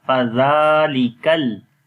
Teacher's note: In Fadhalika there is Zal with the soft sound, and also we long here due to standing Fatha on the Zal.